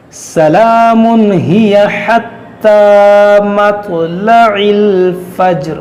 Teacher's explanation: تنوین کے بعد ہا ہے، یہاں پر اظہار کریں گے. سلام ہی حتی تو ہمیں قلقلہ کریں گے مطلع الفجر.